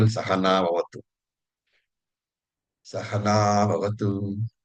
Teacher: Sahana bhavatu. Sah and ha are short. Na is longer